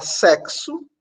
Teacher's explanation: vocês podem perceber que em sexo ou X tem som de KS